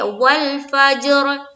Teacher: واو کو لام سے ملانا ہے، فا کو جیم سے ملانا ہے، اور را کے اوپر ہمیں سکون لانا ہے۔